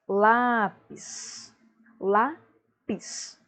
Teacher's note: sílaba tônica, lá, última, penúltima, logo ela é paroxítona